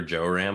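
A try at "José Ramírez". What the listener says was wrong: No, but I think his just because his name is not pronounced Joe, it's Jose.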